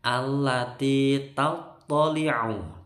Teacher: Allati tattali'u, toknya bertasydid tebel, ainnya ditekan. Tattali'u alal, ainnya ditekan lagi juga.